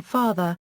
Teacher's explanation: the open back unrounded vowel as in father, its original, Latin and Greek, sound